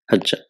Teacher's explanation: So there are three letters hajja, but because the ain kalima and lam kalima are same, the ain kalima loses its vowel sign and there is idgham, what is called assimilation